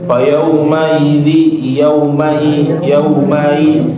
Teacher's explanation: untuk huruf hamzah ya dia suaranya putus ya. Jadi jangan di jangan sampai ikhtilas ataupun dicuri harakatnya.